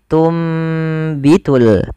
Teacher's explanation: karena ada huruf ba maka suara nunnya dirubah dan diganti dibalikkan menjadi suara huruf mim maka awalnya tunbitu dan ditanda di sini dengan mim kecil agar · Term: iqlab